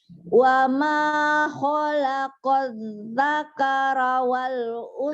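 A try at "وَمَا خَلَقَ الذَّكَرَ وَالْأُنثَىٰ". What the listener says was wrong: Dakaro, jangan dakara. Dakaro. Dakaro. Dakoro. Dakaro.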